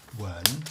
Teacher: with a sort of inquiring tone, second tone